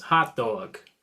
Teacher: in a New York accent, I've got hot, which is lot, and dog, which is cloth, and I'm actually going to hear two different sounds